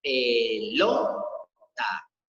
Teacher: El acento o la sílaba tónica se encuentra en lo